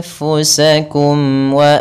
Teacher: izhar syafawi yaitu jelas suara mimnya tidak boleh ditahan